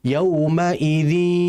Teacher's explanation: ini disebut dengan idgham naqis sehingga ghunah nunnya masih ada yaumaidzi. Kalau kamil kan harusnya yaumaidzi yas harusnya seperti itu.